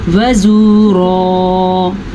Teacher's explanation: را کو پر پڑھنا ہے اور واو مدہ ضرور ادا کرنا ہے